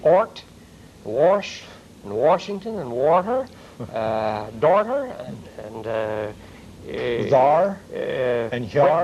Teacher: But that simply indicates that we're very fond of the R sound, and it's always hard. Never trail, though, or a roll, but a good, strong R.